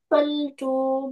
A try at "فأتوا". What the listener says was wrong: فأتوا. This is Hamza, not Lam.